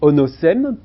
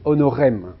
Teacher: Mais, à un moment donné de l'histoire du latin, il y a eu un phénomène qu'on appelle le rotacisme, qui a fait que le S s'est transformé en R, et que onosem, peu à peu, s'est prononcé honorem.